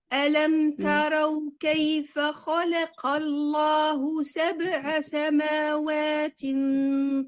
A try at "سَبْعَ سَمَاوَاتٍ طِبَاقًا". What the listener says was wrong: العين مفتوحة، حققي حركة الفتحة.